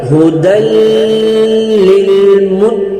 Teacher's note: ہا جو ہے یہ چشمی ہا ہے, اس کو ہم نکالیں گے, ادا کریں گے سینے کے زور سے. ٹھیک ہے, دو ہا ہوتی ہے جو ابھی چشمی ہا آ چکی ہے, تو اس کو ہم سینے سے نکالیں گے.